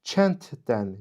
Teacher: Lakin düzgün tələffüzə nəzər yetirdikdə kənddən, yəni sonu d samiti ilə bitən sözlərdən sonra samitlə başlayan, baxın, dən samitlə başlayan şəkilçidir. Samitlə başlayan şəkilçi gəldikdə d samiti t samiti ilə əvəz olunur. Və beləcə bu sözdə t, d samiti yanaşı işlənibdir.